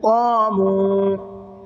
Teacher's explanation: قاف کو منہ بھر کے پڑھنا ہے، اور میم کو تھوڑا سا کھینچنا ہے